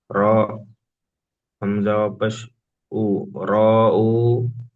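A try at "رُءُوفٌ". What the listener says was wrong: র টান হবে না, হামজা ও পেশ উ ও মাদ্দা একালি টান দিয়ে বলেন, র উ, ফা র দুপেশ ফুর, ফুর নয়, ফা র দুপেশ ফুর।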